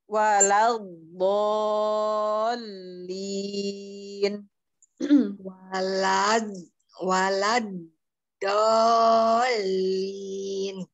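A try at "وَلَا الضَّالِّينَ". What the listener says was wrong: Di situ agak panjang, karena di atas itu ada bendera.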